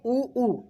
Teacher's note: एक आता है ओष्ठ, जिसमें आते हैं अपने ऊ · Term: ओष्ठ स्वर